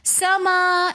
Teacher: समावात में मीम के ऊपर खड़ा ज़बर है, तो इसलिए हम समा 1 अलिफ की मिकदार खींच कर पढ़ रहे हैं।